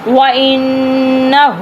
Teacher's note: وَإِنَّهُ، اب ان نون کے اوپر تشدید ہے، نون کے اوپر جہاں پہ نون میم کے اوپر تشدید آ جائے وہاں پہ گننا ہوتا ہے، ناک میں سے آواز نکالتے ہیں، رک کے منہ کو بند کر لیتے ہیں اور ناک میں سے آواز کو نکالتے ہیں